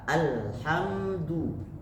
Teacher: karena mim bertemu dengan Dal itu tidak berdengung jadi tidak ada yang ditahan tapi ditahan hanya satu ketukan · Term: tawasut